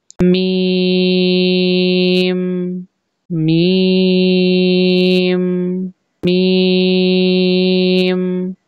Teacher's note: दोनों होठों के खुश्क हिस्सों से मीम अदा होता है यानी दोनों होंठ आपस में मिलके जुदा होंगे